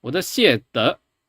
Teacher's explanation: But here instead we have 我 的 谢 德 where it's very clearly 谢 德 either mid or like rising to a mid. So this is a proper 5x chain, even though it's just a verb plus a particle.